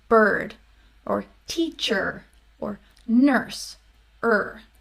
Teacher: it is partially blocked by the r so it's kind of in between a vowel and a consonant right so er right the r when you make r you're · It's sustained, right? You can hold it out, but it is partially blocked by the R. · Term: R-controlled vowels